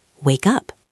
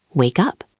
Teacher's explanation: The word wake ends with a K sound. The word up starts with a U sound. When we connect them, the K moves over. It sounds like wake up, like a cup on a table.